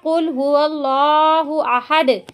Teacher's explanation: कुल के काफ को इसके सही मखरज से पूर करके अदा नहीं करेंगे और यूं पढ़ेंगे कुल हुवल्लाहु अहद, यानी काफ को बारीक करके पढ़ेंगे तो उसका माना होगा खाओ कि अल्लाह एक है, नाउज़ु बिल्लाह।